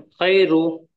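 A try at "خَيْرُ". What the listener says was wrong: नहीं, आप इसको थोड़ा सा थोड़ा सा नहीं, थोड़ा सा और जल्दी पढ़िए। खै बोले तो मजहूल हो जाता। खई पढ़ना है इसको, खई।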